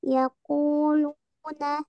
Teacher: Nah, di sini ada huruf waw sukun ya di kalimat ku dan di kalimat lu. Ada huruf waw sukun yang sebelumnya ada harokat dhammah ya. Nah, jadi itu hukumnya mat tabi'i ya atau mat asli.